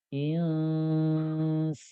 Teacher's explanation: saat nun ini kita ucapkan dan samar, itu ke rongga hidung tetap ada suara yang masuk sehingga menjadi dengung huruf nun ini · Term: ikhfa